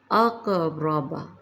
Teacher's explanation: قاف پر جزم، قاف کو پر پڑھیں گے، قلقلہ ہوگا